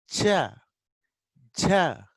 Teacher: It looks like both plosive as well as fricative. That's why it's called affricate.